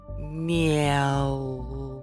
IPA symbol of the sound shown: ’э